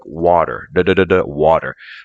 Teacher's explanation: sometimes in American English a t or a d between vowels sound like a quick du it's a softer and faster